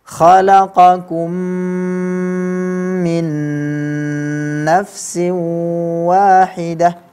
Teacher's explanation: Min nafsin nun sukun ketemu dengan nun lagi. Ini semua harus diberi gunnah.